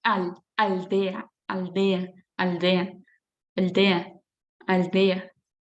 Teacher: El sonido sale por los laterales al decir aldea